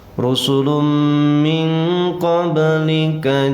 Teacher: tanwin bertemu mim dinamakan idgham. Nama idghamnya adalah idgham bi gunnah, bacanya pakai dengung, tahan, tekan, lalu dengungkan.